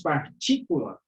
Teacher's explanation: Os irmãos percebam que aquela palavra partícula, né, a sílaba tônica, é o TI, está bem no meio ali.